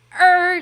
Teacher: She like, is it called a glottal stop? She adds that glottal stop into the liar.